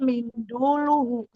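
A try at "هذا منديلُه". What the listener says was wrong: Mindul apa mindil? Hadza bukan mindul ya. Mindiluhu. Terkecoh ya dengan harokat ya. Mindiluhu. Mindil.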